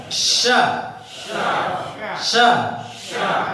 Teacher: Tapi tidak nempel ke langit. Tengah lisan naik ke langit, tapi tidak nempel. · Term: makhraj shin